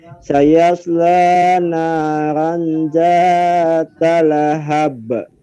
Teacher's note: Karena di ujung kalimat atau kata dan di wakaf, jadi dimantulkannya besar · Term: Qalqalah Kubra